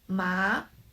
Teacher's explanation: 阳 阳 For example, 么啊麻 么啊麻 The first tone is flat, the second tone is raised, 麻 The voice rises from not low and not high part, and then to the highest.